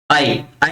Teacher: आवाज कंठ से आ रही है और आपकी जीभ जो है तालू को टच कर रही है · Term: कंठ तालव्य